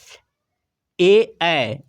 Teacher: ए ऐ इसका उच्चारण कंठ तालु से होता है। कंठ तालव्य वर्ण इसलिए कहा जाता है।